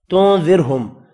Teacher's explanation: اب یہاں پر 1 2 3 میم ساکن ہے، تینوں پر اظہار ہوگا، غنہ نہیں ہوگا۔ تنذرہم نون کا اخفا ہوگا، را کو زیر کی وجہ سے باریک پڑھنا ہے